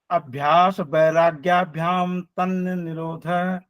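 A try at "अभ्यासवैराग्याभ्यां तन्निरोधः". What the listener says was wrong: तन्न निरोध नहीं बोलेगा सर, ये तन्निरोध।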